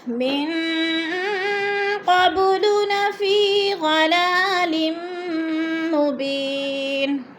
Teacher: مبینن، دو زیر تنوین وقف کی صورت میں جزم میں بدل کر پڑھیں گے